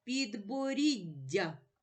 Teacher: ці букви позначають подовжений М'який приголосний звук дь